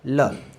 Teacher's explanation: जीभ के आगे का भाग मसूड़ों को स्पर्श करता है और वायु है जो पास से निकल जाती है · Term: पार्श्विक